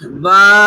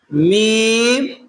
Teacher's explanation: با اندر والا حصہ مل رہا ہے، میم باہر والا حصہ مل رہا ہے